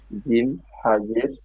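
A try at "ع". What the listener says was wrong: হা নয়, এটা হলো আইন, ভালো করে দেখেন, এটা আইন রয়েছে। আইন জের।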